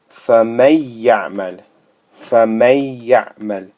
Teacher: It's merged with this ya. This Noon has merged with the ya here, such that it essentially goes behind it. It's merged behind it. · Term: Idgham